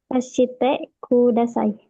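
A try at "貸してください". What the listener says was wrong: Eh, Tadi ada setengah harkat, jadi semuanya nggak pakai harkat. Nol harkat coba. Nol harkat, satu napas. Satu napas.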